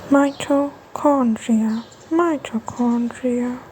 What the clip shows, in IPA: ˌmaɪ.təˈkɒn.dri.ə